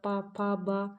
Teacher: उच्चारण दोनों ओठों के स्पर्श से होता है, इसलिए इन्हें ओष्ठ वर्ण कहते हैं